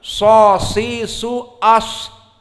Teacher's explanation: Tadi sod hams, ada kebocoran, ada nafas yang keluar.